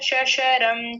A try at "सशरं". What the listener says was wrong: यहाँ थोड़ा सा तालव्य जैसा बना था, ये दंत्य जो है, दंत्य सकार को तालव्य शकार जैसा कर दिया था, तो इसको ठीक कर लेंगे बस।